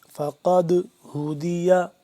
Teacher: دال ساکن ہے تو اس پہ ہم کیا کریں گے؟ قلقلہ کریں گے